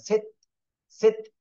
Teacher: তা কিন্তু কলকলার হরফ না, এই জন্য ধাক্কা দেওয়া যাবে না